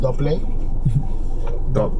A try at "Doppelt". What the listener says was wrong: It's not Lay, but Elt. Doppelt. Doppelt. No, because Filet. This is ELT as opposed to LET.